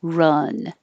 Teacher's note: This is the vowel, as in up. So your tongue is very low in the middle.